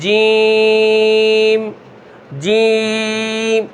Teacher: اب یہ ناک میں آواز جا رہی ہے، تو یہ ناک میں آواز نہیں جانی چاہیے